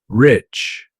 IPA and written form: rɪtʃ (Rich)